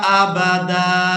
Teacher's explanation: दाल को अलिफ मद्दा की वजह से खींच कर अदा करना है। वक़फ़ की सूरत में ये जो अलिफ आप देख रहे हैं ये अलिफ मद्दा बन जाएगा, क्योंकि यहाँ दाल पर हम एक ज़बर अदा करेंगे।